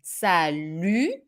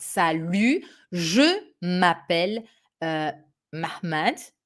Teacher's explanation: a closed U, and the final T that is not here but should be here is not pronounced. Okay, you do not hear it.